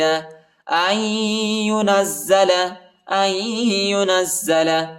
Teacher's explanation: حمزہ کو یا کے ساتھ ملائیں گے، نون نہیں پڑھا جاتا